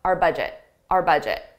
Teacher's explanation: The budget belongs to us, but I pronounce it just as a very unstressed R